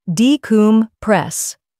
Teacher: Stress the third syllable, decompress.